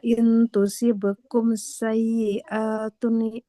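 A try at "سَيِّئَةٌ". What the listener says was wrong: Hamzahnya panjang atau tidak, Ibu? Enggak ya, bukan sayyi'at. Tuh nggak boleh dipanjangkan. Karena harokat fathah tidak ada alif di depannya. Wa in tusibakum sayyi'atun yafrahu biha.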